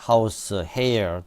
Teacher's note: 이 H는 소리를 낼 때에는 무성음을 낼 때처럼 성문 글로티스가 열려 있습니다. 혀와 입술은 공기의 흐름이 열린 성문을 통과할 때 뒤따르는 모음을 소리 내기 위한 위치를 취합니다. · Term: 무성 성문 마찰음